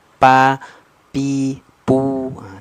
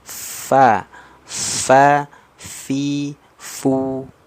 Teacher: dari gigi seri atas menyentuh ke perut bibir bawah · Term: huruf Fa